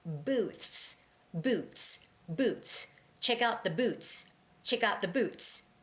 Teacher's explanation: you sort of skip that TH sound and go right to the S sound